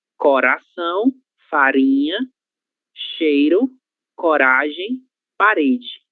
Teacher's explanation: el mismo sonido que tienen ustedes en español, que es el sonido vibrante, pero no es el vibrante múltiple, es el vibrante simple